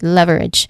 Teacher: Pronunciation wise, leverage, the first syllable is the stressed part, love, that's the stressed part, leverage.